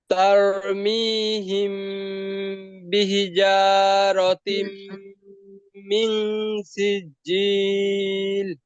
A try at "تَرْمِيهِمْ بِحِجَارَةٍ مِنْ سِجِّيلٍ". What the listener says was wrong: বিহি, হা চাপ দিয়ে হবে।